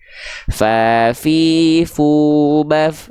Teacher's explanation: Wa min batuni syafah falfa ma'atrofi thanayal musyrifah. Disentuhkan ujung gigi seri atas kita ya ke perut bibir bawah atau ke badan bibir bawah. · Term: batunus syafah